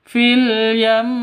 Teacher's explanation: Cara bacanya ketika denguk ketika waqaf berhenti maka yam harus ditahan dua ketukan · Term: ghunah, gunnah